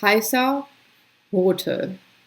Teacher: You can hear the difference though between like a real schwa sound versus the ER rote, heißer.